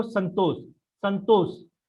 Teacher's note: तो आपका जो जीभ है वो दांत की तरफ टच करेगा, ठीक है, दांत को टच करेगा, इसीलिए इसको दंत शकार बोलते हैं, ठीक है।